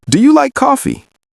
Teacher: yes-no questions usually have rising intonation at the end. What does that mean? Your voice goes up at the end.